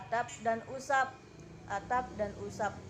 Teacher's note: Misalnya fonem B, pada silaba akhir pada kata adab dan sebab, diucapkan P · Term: netralisasi